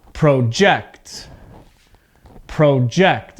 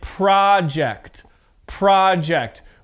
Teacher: my voice goes up on the second part of the word because with verbs the stress is on the second part · with a noun two syllables the stress is at the beginning